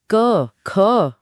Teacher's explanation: सबसे पीछे गले से शुरू होता है क वर्ग। जहां जीभ का पिछला हिस्सा गले को छूता है।